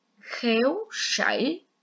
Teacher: tiếng sảy có âm S khi đọc mình cong lưỡi